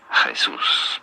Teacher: you do want to stress on the second syllable that's what the accent on the means here Jesus pretty straightforward